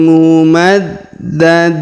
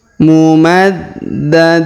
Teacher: huruf da berharakat tasdid maka kita tahan dan kita tekan